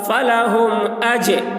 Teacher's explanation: فلہم، حمزہ جیم زبر اج، جیم کے اوپر جزم ہے، جزم والے حرف کو پیچھے والے حرف سے ملا کر پڑھیں گے فلہم اج، یہ جیم حروف قلقلہ میں سے ہے اور اس پر جزم ہے اس لیے جیم میں قلقلہ ہوگا